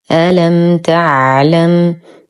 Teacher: ميم ساكنة وبعدها حرف التاء، الحكم إظهار شفوي مع غنة ناقصة